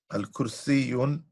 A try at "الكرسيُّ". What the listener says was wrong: Oh, see Lujain, he pronounced the word al-kursi and he pronounced it with two dhammas. So remember, if the word has alif and lam, then it has one dhamma. Okay, so we should have said al-kursiyu maksurun.